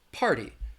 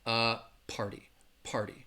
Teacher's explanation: that T is almost gonna sound more like a soft D sound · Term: flap T sound